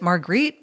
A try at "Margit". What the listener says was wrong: There's no R. It's Margit or Margit. No, you're adding an R. R. No, M-A-R. I mean, nobody's French.